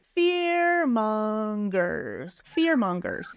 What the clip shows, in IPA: fɪr'mʌŋɡərs